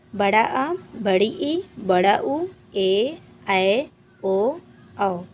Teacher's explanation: दीर्घ स्वर। दीर्घ स्वर ह्रस्व स्वर से 2 गुना समय लगता है बोलने में। इसकी संख्या 7 होती है।